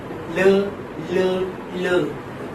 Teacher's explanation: So air is released through the sides of the tongue, while the tip of the tongue touches the central part of the alveolar ridge, or say the upper teeth. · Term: lateral